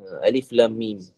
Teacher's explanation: Lam tu bacaan harakatnya 6. Kemudian antara lam dan mim tu ada dengung, 2 harakat. Kemudian baru mim 6 harakat.